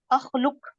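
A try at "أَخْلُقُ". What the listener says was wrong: اخلق نہیں، اخلق نہیں، پیش سے اخلق. اخلق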